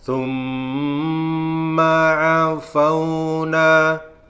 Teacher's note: Kalau mim bertasdid, maka dibaca gunnah. Gunnah musaddada. Berdengung karena bertasdid. Maka membacanya summa.